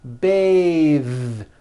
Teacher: when you change it into a verb to bathe the vowel changes to an a sound and the th is voiced